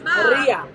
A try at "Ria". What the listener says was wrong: No, it's Ria. Ria. No, it's Ria. But South Africans have a problem with the R. You have a massive issue with the R.